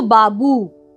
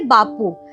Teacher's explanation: বাবু থেকে বাপু একটা ঘোষ ধ্বনি অঘোষ ধ্বনিতে পরিণত হলো। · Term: অঘোষী ভবন